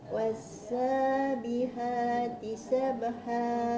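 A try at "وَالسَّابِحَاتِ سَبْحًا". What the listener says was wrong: Yang tu bunyi ha je makcik. Kena bagi dalam lagi. Was-sabihati sabha.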